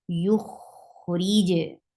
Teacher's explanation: Listen how Rakhawa is here on Kha, and Kha is heavy too.